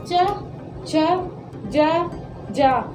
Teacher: जीभ जाके कहाँ लग रही है तालु पे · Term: चा वर्ग